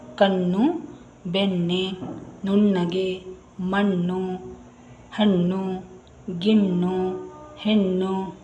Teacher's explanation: ಣ ಅಂತ ಹೇಳುವಾಗ ಅದು ತಾಳುವಿನ ಕಡೆ ಹೋಗುತ್ತೆ ಅಂದ್ರೆ ನಮ್ಮ ನಾಲಿಗೆ ತುದಿ ಈ ನಮ್ಮ ಬಾಯಿಯ ಮೇಲೆ ಇದೆಯಲ್ಲ ಅಲ್ಲಿ ತಾಕುತ್ತೆ